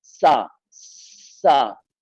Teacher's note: سین کے اندر شین والی صفت ہے سیٹی کے ساتھ صفت سفیر ہے. سین شدت ہے لیکن جب ہم سا ادا کریں گے تو سا نہایت نرمی کے ساتھ ادا ہوگا.